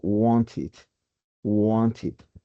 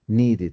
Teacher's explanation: si el verbo regular termina en t o en d, le agrego ed, pero esta suena it